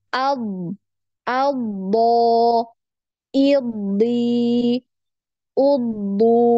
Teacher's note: ketika ditasdid pun dia ada aliran suara